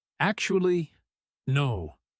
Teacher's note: Watch how actually rises slightly here, too, just like honestly did earlier, signaling a small shift in his own thinking.